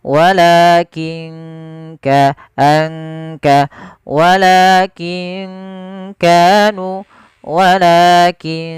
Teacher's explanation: ada nun sukun bertemu dengan huruf Kaf maka ini juga sama bacaan Ikhfa cara membacanya samarkan nunnya · Kaf makhrajnya dari pangkal tenggorokan kita